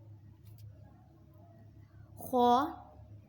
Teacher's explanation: حلق کے اوپر والے حصے سے ادا ہوتا ہے۔